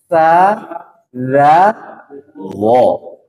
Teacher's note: ujung lidah bertemu dengan ujung gigi seri atas